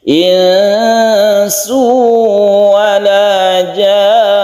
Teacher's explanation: Kemudian ini kita panjangkan karena dia adalah mad lazim mutawwal atau mad lazim mustaqal kilmi, kita panjangkan dulu, kemudian kita bertasydid nun artinya guna musyaddadan. Jadi setelah kita panjangkan kita dengungkan yang nunnya.